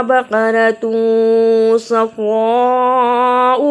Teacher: ما لونها نہیں پڑھنا، ما لونها. بقرۃ صفراء اخفا کیا، بڑی مد کو ادا کیا اور حمزہ کو جلدی پڑھا. تسر الناظرین، سین کو صحیح ادا کیا اور زوا کو بھی ادا کیا.